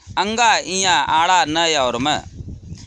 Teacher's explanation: इनका उच्चारण करने के लिए श्वास को अंशतः नासिका से बाहर छोड़ना पड़ता है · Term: अनुनासिक